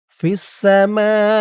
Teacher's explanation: মা মধ্যে মুত্তাসিল 4 আলিফ টান